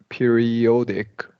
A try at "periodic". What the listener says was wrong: Okay, and this is now you stressed it correctly, but it is a short O, periodic.